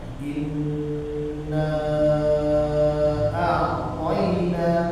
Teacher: jika nun bertasydid tidak boleh ditekan, tapi ditahan saja. Jadi jangan kita baca tapi ditahan. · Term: nun tasydid